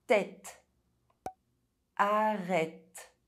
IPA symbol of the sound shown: ɛ